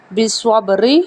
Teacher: یہاں پہ قلقلہ بھی ہے کیونکہ با ساکن ہے